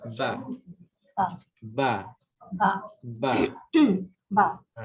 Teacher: Lidah memang tidak bergerak, ba je, bibir je, ba. Dan bibir atas dan bibir bawah ni memainkan peranan lah semasa menyebutnya ba. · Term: huruf ba